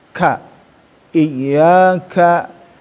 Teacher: memiliki sifat hames ya, ada desis-nya ya biar menyempurnakan huruf ka ya